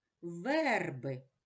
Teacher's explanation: А у слові верби звук е промовляється чітко тому що на нього падає наголос